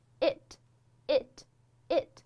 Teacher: 但是在这样一个短元音里面呢，它你的嘴角是比较矜持的咧一下，就是象征性的